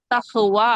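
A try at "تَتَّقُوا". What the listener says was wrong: تق قاف نکالے. تخ نہیں ہاں نہیں تخ تخ نہیں تق تق یعنی یہ حلق کا حصہ وہ پورا ملنا چاہیے، بند ہو جانا چاہیے اللہ کو. تق زبان کی جڑ اوپر کے تالو سے مل جائے.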